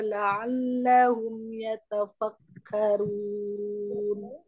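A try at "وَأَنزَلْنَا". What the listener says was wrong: Afwan, untuk ikhfa-nya jangan lupa nun sukun ketemu zai. Wa anzalna wa anzalna. tadi ifanya kurang sayang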